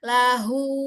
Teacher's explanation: saat dia sudah mad, maka sempurnakan huruf itu keluarnya dari aljauh. Rongga tenggorokan ke rongga mulut. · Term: Mad silah kasirah